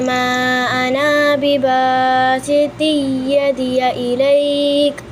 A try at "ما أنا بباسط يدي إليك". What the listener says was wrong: आना को लॉन्ग नहीं करना बेटे माँ आना बिबासिती यदिया